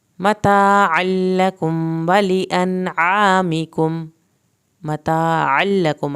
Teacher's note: عین کو حلق سے پڑھنا ہے